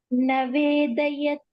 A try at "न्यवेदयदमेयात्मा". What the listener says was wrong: न्य न्य like न्यायं न्य If you are saying it together, न्यवेदयदमेयात्मा. carrying navedayat. It's nya like nyayam.